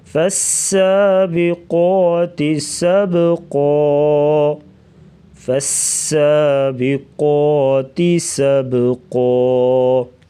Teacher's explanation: سین سیٹی جیسی آواز نکالیں گے, سختی سے پڑھیں گے. سبقا با جو ہے ساکن ہے تو یہاں پر قلقلہ ہوگا, یعنی آواز کو ہلا کے پڑھیں گے